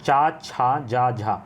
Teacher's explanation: चा वर्ग का उच्चारण स्थान तालु से होता है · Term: तालव्य